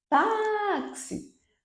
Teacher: tá é a sílaba tônica